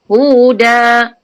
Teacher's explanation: ha besar, sini di pangkal halkum